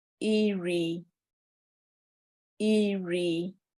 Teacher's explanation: An example of rising diacritic on the same vowel sound, E, would be iri